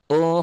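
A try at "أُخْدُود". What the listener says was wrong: Ukhdud. Kayaknya orang Lampung Jawa Jawareh ya, nggak bisa khoknya ya. Lagi kho ukhdud.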